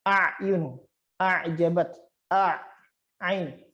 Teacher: kita menghimpitkan sedikit itu kerongkongan supaya terkena kerongkongan yang tengah atau tenggorokan yang bagian tengah.